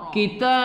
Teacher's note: Tatslunal kitab, ta kita baca panjang pada mad alif sukun, pada ba kita qalqalahkan, qalqalah kubra